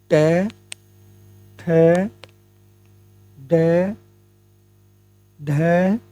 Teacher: मूर्धन्य में आता है हमारा ट वर्ग